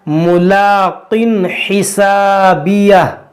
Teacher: دو زیر کی تنوین ہے, اس کے بعد ہا ہے, یہاں پر اظہار کا قاعدہ لگے گا